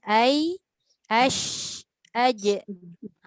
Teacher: daripada pertengahan lidah dia keluar daripada makhraj ni 3 huruf. Iaitu ya, shin dengan jim.